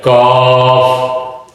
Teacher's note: یہ قاف کے مخرج کے ساتھ ہی منہ کی طرف، یعنی زبان کی جڑ منہ کی طرف جب تالو سے ٹکرائے تو کاف ادا ہوتا ہے